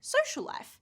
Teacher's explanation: because the word social ends in a L sound and the word life starts with the L sound, I just say social life. I actually combine the two L sounds into one. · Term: combining